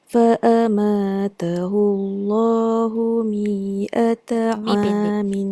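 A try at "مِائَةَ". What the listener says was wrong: Mi'ata Mi tu pendek je. Mi'ata Sebab dekat ayat mi'ata amin tu mi tu tak panjang. Mi'ata am. Itu huruf ziyadah. Pendek.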